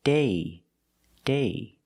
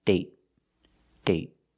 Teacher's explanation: with date, we see the vowel is shorter because you have a stop T at the end.